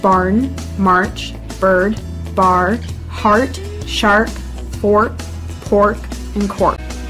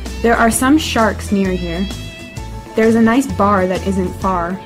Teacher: One of the main characteristics of the accent is the R sound. This is often heavily pronounced, much more so than British English.